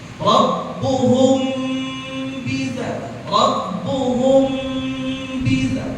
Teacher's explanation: Pada kalimat rabbuhum bidzambi, rabbuhum bi, itu ada namanya ikhfa syabab. Karena ada mim ketemu bab jadi wajibul ghunnah. Wajib ditahan berapa harokat? 2 harokat.